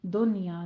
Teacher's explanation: اور دنیا میں اظہار مطلق ایک ہی لفظ کے اندر نون ساکن بھی ہے اور یا بھی لیکن قاعدہ ہمارے پاس کیا ہے ایک لفظ کے اندر کی شرط ہے اس لیے ہم یہاں پہ دنیا نہیں کہیں گے دنیا نون کو ظاہر کریں گے اظہار مطلق کریں گے